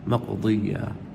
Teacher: را کو موٹا کریں، مقو، قاف پہ جھٹکا دیں، مقو ضی، ضاد کو موٹا کریں اور یہاں پہ تشدید ہے